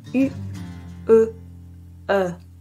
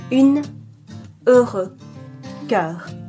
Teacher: Next, we have the palatal rounded vowels. They come from the front of the palate, but you round your lips. Open your mouth progressively. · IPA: /y/, /ø/, /œ/